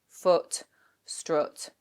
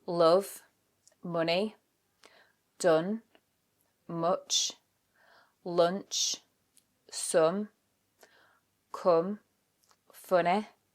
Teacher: They would all take our strut vowel, the But in a Yorkshire accent, you don't use the sound, the strut vowel, as much. Instead, they use the vowel in book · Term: foot-strut split